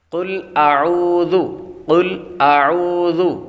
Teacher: قل اعوذ، قل اعوذ، ذو یہاں پر ذال ہے تو ذال نرمی کے ساتھ پڑھی جاتی ہے، اس میں سیٹی کی آواز بالکل نہیں آئے گی